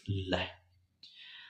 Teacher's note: य व पार्श्विक व्यंजन पार्श्व का शाब्दिक अर्थ है बगल का अर्थात जिस व्यंजन का उच्चारण करते समय वायु जीभ के दोनों बगल से बाहर निकल जाती है। पार्श्विक व्यंजन कहलाता है।